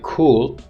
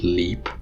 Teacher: So in the word like cool, so the la at the end of the word is velarized. So this word final or syllable final la has a velar resonance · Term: dark L